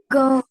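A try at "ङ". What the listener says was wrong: नहीं, ये अंतिम का वर्ग में सबसे लास्ट वाला। गा तो तीसरा है, गा का गा।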